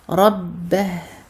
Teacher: Ra mufakhama, ba doublé à cause de la shadda